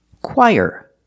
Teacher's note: Put the stress on the first syllable.